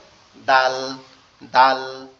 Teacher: এই যে দালটা কিভাবে উচ্চারণ করা হবে, আমাদের সামনে জিহ্বার আগা সামনে দুই দাঁতের গোড়ার সঙ্গে লাগবে, অর্থাৎ তায়ের মতো লেগে উচ্চারণ হবে